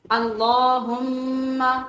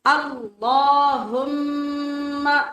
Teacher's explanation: اللہم یہ غلط ہوگا، اللہ ایک تو لام پور ہے، دوسرے کھڑی زبر کی وجہ سے لمبا ہے، تیسرے میم کے اوپر شد ہونے کی وجہ سے ہم غنہ کریں گے۔ غنہ کہتے ہیں ناک میں آواز لے جا کے تھوڑا لمبا کر کے پڑھنا۔ تو یہ آج سے یاد کر لیں، میم شد والی ہو اور نون شد والی ہو تو دونوں پہ جہاں بھی ہم پڑھیں گے غنہ کریں گے۔